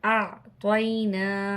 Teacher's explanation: عین کی آواز کو ظاہر کر کے پڑھیں گے، حمزہ کی آواز کو الگ اور عین کی آواز کو الگ